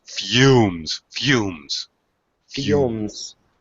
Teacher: This is one of those words where there's kind of a a Y sound with the U.